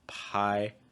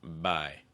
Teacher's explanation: for the p sound there's no vibration · Voiceless P, voiced B.